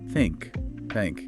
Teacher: air pushing out between your tongue and teeth. No voice. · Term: voiceless